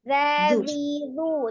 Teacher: pengucapan huruf zal itu sebenarnya dia lembut ya, karena sifatnya adalah rohwah ya, tidak dibaca di penekanan · makhrajnya di ujung lidah yang bertemu dengan ujung gigi seri bagian atas ya